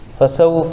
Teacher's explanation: واو ساکن سے پہلے سین کے اوپر زبر ہے اس لیے واو لین ہوگا، واو لین کو نرم آواز کا جلد ادا کریں گے